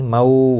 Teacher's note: واولین ہے، تھوڑا نرمی کے ساتھ کھینچ کر ادا کریں گے